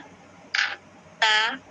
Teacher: تا ہمارے زبان کی نوک اوپر والے دانت کے جڑ سے بولے جاتے ہیں